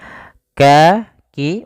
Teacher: kalau Kaf di makhraj huruf Kaf itu kan dipangkal lidah mendekati huruf qf